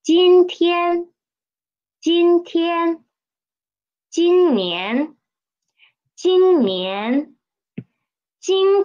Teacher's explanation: it is a third tone we need to read it as a half third tone